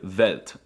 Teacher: they pronounce the W's with a V sound